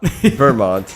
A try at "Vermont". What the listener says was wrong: you like put a space in between Vermont.